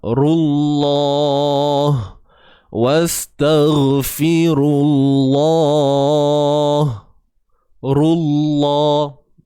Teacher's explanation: Jadi kalimah Allah ni perlu dibaca tebal disebabkan ra yang berbaris hadapan. Bukan sebab hamzah wasal, bukan sebab huruf ziyadah, bukan sebab huruf waw.